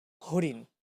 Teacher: আবার যদি বলি হরিণ, এখানে মূর্ধন্য ন ইউজ হয়েছে, কিন্তু আমরা যদিও লিখছি মূর্ধন্য ন, আমরা উচ্চারণ করছি দন্ত নয়ের মতোই